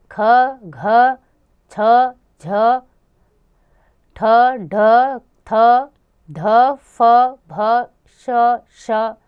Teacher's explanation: स्पर्श व्यंजनों में प्रत्येक वर्ण का दूसरा तथा चौथा वर्ण और ऊष्म व्यंजन महाप्राण व्यंजन है। तो बच्चों, जिन ध्वनियों के उच्चारण से मुंह में जो हम हवा निकालते हैं वो अधिक मात्रा में निकलती है।